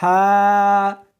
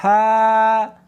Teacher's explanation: اس کو حلق میں سے نکالنا ہے اور ساتھ میں ہوا بھی ہونی چاہیے، ہا۔ ہا نہیں پڑھنی بلکہ اس کو حلق میں سے نکالنا ہے، سینے میں سے نہیں نکالنا